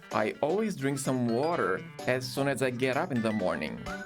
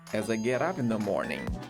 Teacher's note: geralmente a entonação da frase vai ser decrescente lá no finalzinho